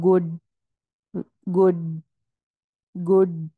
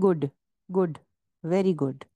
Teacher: English میں بھی مزے کی بات ہوتی ہے، ڈی کے اندر کلکلا کی ساؤنڈ آتی ہے